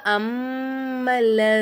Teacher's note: அந்த மீமுக்கு மேல சத்து வந்ததுனால நம்ம என்ன செய்யணும் இந்த மீமை நல்லா அழுத்தி உச்சரிக்கணும் அம்மல்ல அதே மாதிரி சத்து செய்யப்பட்ட எழுத்துக்கு முன்னாடி உள்ள எழுத்துல ஹரக்கத்துகள் இல்ல